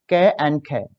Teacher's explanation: तो क और ख हमारी कंठ ध्वनि होती हैं, जो हमारे गले से निकल रही हैं उनको कंठ ध्वनि बोला गया है।